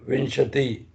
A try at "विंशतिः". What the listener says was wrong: Vimshatihi. Visarga is there.